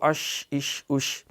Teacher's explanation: تفشی، یہ شین کی صفت ہے پھیلاؤ